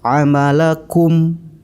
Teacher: Kemudian hukum yang ketiga adalah idhar syafawi. Cara membacanya yaitu mim mati dibaca dengan jelas dan bibir harus rapat.